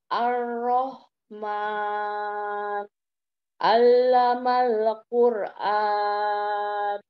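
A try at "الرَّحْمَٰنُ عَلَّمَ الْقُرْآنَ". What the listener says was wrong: Masya Allah. Barakallahu fiik, jazakallahu khair.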